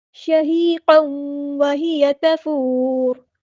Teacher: قاف کے اوپر 2 زبر ہے، 2 زبر کو ہم تنوین کہتے ہیں، آگے یہاں پہ واو آ گئی ہے تو ادغام مع الغنہ ہوگا